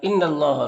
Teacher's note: نون مشدد ہے تو غنہ ہوگا، نون کی آواز کو ناک میں گنگنائیں گے، 1 الف کی مقدار